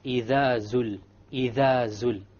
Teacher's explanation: The dhal, my tongue is outside. إِذَا. And then when I get to zul, the tongue goes inside.